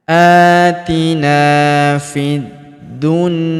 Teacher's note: Huruf ya kita panjangkan dua harakat karena terdapat alif di depannya.